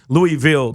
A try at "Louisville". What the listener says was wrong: First of all, you used way too many letters when you said Louisville. Louisville. they leave out all the things in the middle. an L and a V and an L.